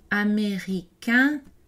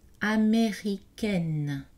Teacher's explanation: Américain, le N n'est pas prononcé pour le masculin grammatical. Américaine, on a une voyelle orale suivie d'un N prononcé pour indiquer le féminin grammatical.